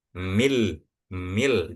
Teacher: Jadi bukan minal bukan mil langsung masuk ke huruf lam dan bacanya pun enggak pakai ditahan atau didengungkan